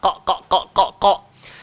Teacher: Baik, jadi huruf Qaf ni pula macam kita semua sedia maklum, dia adalah huruf tebal, isti'la. Jadi tempat keluar dia pula adalah pada pangkal lidah. Qa. Kalau kita tak bagi hak pada pangkal, nanti dia jadi huruf kaf.